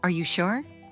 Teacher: Voice goes up at the end. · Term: rising intonation